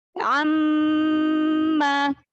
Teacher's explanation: Gunah pada mim tasydidnya boleh lebih panjang lagi karena mim tasydid itu gunahnya masuk ke tingkatan gunah akmal, gunah yang pertama.